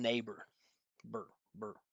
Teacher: burr, burr, right? No vowel sound at all.